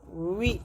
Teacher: بعض طلباء پڑھتے ہیں نیچے کے ہونٹوں سے اوپر کے دانتوں کو لگا کر، نیچے کے ہونٹوں کو اوپر کے دانتوں کو لگا کر وی وا وہ کرتے ہیں، یہ صحیح نہیں ہے۔ ہونٹوں کو گول کر کے دونوں ہونٹوں کی گولائی سے، جبکہ ناتمام ملے دونوں ہونٹ، پورا نہیں ملنا چاہیے، تھوڑا سے حصہ باقی رہنا، تو واو نکلتا ہے، واو کا مخرج ہے، دونوں ہونٹوں کی گولائی جبکہ ناتمام ملے۔